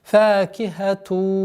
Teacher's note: Здесь у нас частичная назализация с ассимиляцией в размере 2 огласовок. Идгам бигунна накиса.